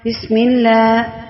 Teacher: سین میں سٹی کی آواز پیدا ہونی چاہیے۔ بسم اللہ، ملہ جو ہے باریک پڑھا جائے گا۔